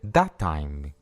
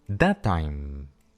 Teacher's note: ¿Notas cómo en vez de separar las palabras, simplemente alargamos la consonante un poco?